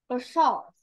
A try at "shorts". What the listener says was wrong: Shorts. Shorts, not a short. Con sẽ nhớ cái quần á. Cái quần quần sọt á, nó có hai cái ống đó nha. Ừ, mình sẽ dùng là shorts, con đừng có dùng a short nha.